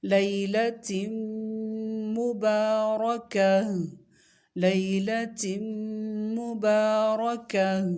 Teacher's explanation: اس میں صرف را کو موٹا پڑھنا ہے اور حالت وقف میں تا کو ہا میں بدل دیں گے